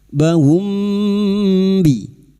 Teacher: Berikutnya huruf mim sukun bertemu ba namanya bacaan ikfa syafawi. Samar di bibir kita samarkan bunyi mim sukun dan mendengung selama 3 harakat